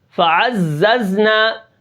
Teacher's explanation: زا کے اندر پھر اس سے سین سے کم سیٹی ہوتی ہے